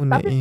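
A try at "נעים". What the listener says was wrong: nggak pakai U. Itu Neum. Ustadz Kim maunya Neim.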